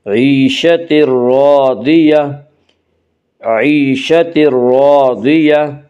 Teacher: ضاد کو پر پڑھیں گے۔ ضاد حروف مستعلیہ میں سے ہے